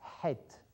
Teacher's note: it comes right from the middle of your throat